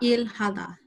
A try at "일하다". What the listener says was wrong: Exactly.